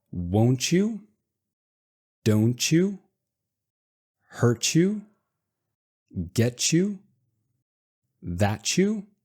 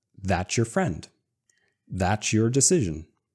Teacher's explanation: we take both the T and the Y, we throw them away, and add a ch sound.